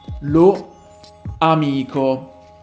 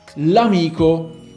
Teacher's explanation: you have two vowels and the sound is paused between the two words